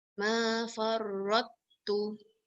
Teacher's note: Tidak boleh dikasihkan qalqalah pada ta. Kita terus baca pada ta.